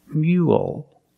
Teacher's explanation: Finish with a dark L because the L is at the end of the word after a vowel.